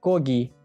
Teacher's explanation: soʻz boshida k, soʻz oʻrtasida esa yaʼni ikkita unlikni oʻrtasida G boʻlib oʻqilmoqda